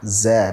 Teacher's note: Tidak ada ujung lidah sedikit yang keluar. Dia di dalam semua kalau zai.